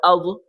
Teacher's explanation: اگلا لفظ دیکھیں، زبان کی کروٹ بائیں یا دائیں طرف لگا کے پڑھیں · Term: ضاد